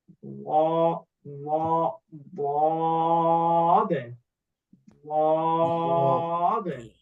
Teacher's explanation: বদ উচ্চারণের সময় জিহ্বার কিনারা মাড়ির দাঁতের গোড়ার সঙ্গে টাচ লেগে উচ্চারণ হবে ডান সাইডে আপনার মাড়ির দাঁতের গোড়ার সঙ্গে টাচ লাগিয়ে উচ্চারণ করলেন